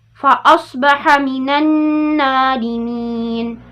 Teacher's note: Nun bertasdid itu hukumnya adalah gunnah. Didengung 2 harokat.